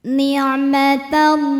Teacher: Alif lamnya dinamakan dengan alif lam syamsiyah karena alif lam menghadapi huruf syamsiyah yaitu lam, maka alif lam tidak kita baca atau diidghamkan